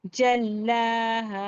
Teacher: پھر جیم کو لام سے ملائیں گے، لام کو ایک بار جیم سے ایک بار کھڑے زبر کی حالت میں تنہا پڑھیں گے، اور شدت اور سختی کے ساتھ لام کو پڑھا جائے گا. اور لام کو ایک الف کی مقدار کھینچ کر بھی پڑھیں گے کیونکہ کھڑا زبر ہے. پھر خالی الف سے پہلے ہا پر زبر الف مدہ ایک الف کے برابر کھینچ کر پڑھیں گے. · خالی الف سے پہلے ہا پر زبر الف مدہ ایک الف کے برابر کھینچ کر پڑھیں گے. جلہا، دونوں کھینچنا ہے، ہا اور لا.